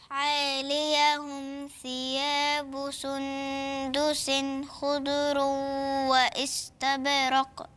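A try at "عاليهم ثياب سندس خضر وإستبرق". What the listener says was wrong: احسنتي، بس انا ايه الضاد مش عايزاها تلقلق منك، مش عايزاها ان احنا نقلقلها. خض خض رو خض رو واستبرق.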